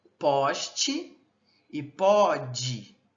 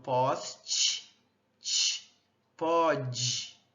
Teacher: Nós também temos as consoantes africadas, pessoal. As nas consoantes africadas, nós temos a oclusão e imediatamente a fricção. Então a gente junta o fechamento com a fricção e elas são todas, né, al velo palatal, ao vulo palatais, né, e o que distingue também é o vozeamento.